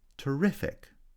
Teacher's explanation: terrific stress on the second syllable